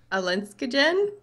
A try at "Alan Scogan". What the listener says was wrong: Alan Scogan. I think it's two words. I think his name is Alan Scogan.